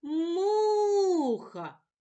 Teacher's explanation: перший склад му наголошений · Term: наголос